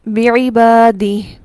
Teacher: اسی لیے اس مد کا نام مد صلہ صغریٰ ہے، وہ مد جو وصل کی صورت میں ہوگی، وقف کی صورت میں یہ مد نہیں ہوگی بلکہ ہائے ضمیر ساکن ہو جائے گی